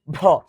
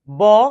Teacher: এভাবে দেখছিলাম আমরা, দেখো যদি আমরা বলি এভাবে মুখের কাছে নিয়ে বাতাস দিই, বাতাস বেশি হলে মহাপ্রাণ, কম হলে অল্প প্রাণ।